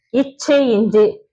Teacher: நாவுடைய இடைப்பகுதி வந்து நடு அண்ணத்தின் அதே இடைப்பகுதியை பொருந்துவதால் பிறக்கிறது